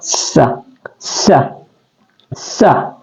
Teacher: Sin di sini adalah dia huruf tarful lisan atau keluar di ujung lidah